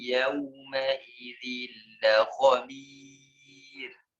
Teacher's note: roknya tipis karena berhadapan dengan sebelumnya kasrah ditambah dengan ada ya di tipis ya.